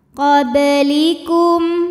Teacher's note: dibaca dipantulkan dengan pantulan yang kecil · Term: Qalqalah sugro